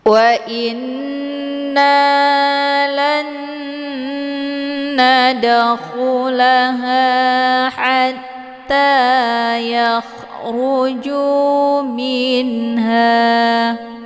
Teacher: nun sukunnya dimasukkan ke dalam huruf nun dengan cara ditekan kemudian ditahan lebih kurang 2 harokat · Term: idgham ma'al ghunnah